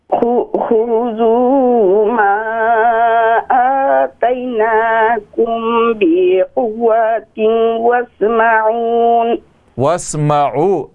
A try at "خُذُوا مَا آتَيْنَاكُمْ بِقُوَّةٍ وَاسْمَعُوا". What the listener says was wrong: نون نہیں ہے یہاں پہ. وَاسْمَعُوا